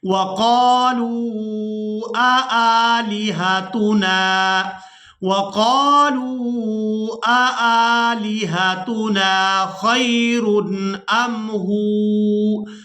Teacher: وَقَالُوا، وَقَالُوا اب یہاں پر دیکھیں کہ پہلا حمزہ کے اوپر زبر ہے، تو اس کو ہم نے بغیر جھٹکے اور بغیر کھینچے ادا کرنا ہے، اور دوسرا حمزہ کے اوپر ہے کھڑی زبر، تو اس حمزہ کو ہم نے کھینچ کر ادا کرنا ہے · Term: دو حمزہ